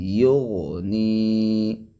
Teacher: غین موٹا ہے لیکن قلقلہ نہیں